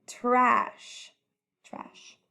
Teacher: it is a stretchy voice-off sound